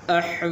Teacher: تو یہاں پر کھڑی زبر ہے تو اس کو 1 الف کے برابر لمبا کرتے ہیں